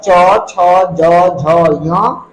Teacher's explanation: ये जो वर्ण है तालू को स्पर्श करते हुए बाहर निकलता है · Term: तलाब वर्ण